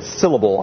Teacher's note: if I hit syllable I hit the first syllable of syllable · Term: stressed syllables